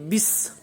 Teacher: تو اب ہم پڑھیں گے بس، سیٹی کی آواز آئے، اگر سیٹی کی آواز پیدا نہ کی تو یہ تھا بن جائے گی، تا کے بعد والا جو حرف ہے تھا وہ بن جائے گا، تو حرف کی جگہ پر دوسرا حرف بدلنے کی وجہ سے لحن جلی والی غلطی پائی جائے گی۔ تو اس کو پڑھنا ہے بس، یعنی سیٹی کی آواز جو ہے وہ آنی چاہیے